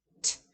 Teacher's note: And as you can hear, it is voiceless. It's a voiceless alveolar stop. So it's produced right on that, articulated with that alveolar ridge right behind the teeth.